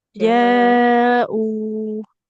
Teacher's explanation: Hamzahnya dia kan domah bertemu dengan wawu. Maka panjang dua harokat.